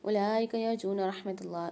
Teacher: اولئک میں واو کو سائلنٹ کر دیں گے، لام کے اوپر کھڑا زبر ہے اور مد ہے، کھینچ کے پڑھیں گے 5 سے 6 الف کی مقدار۔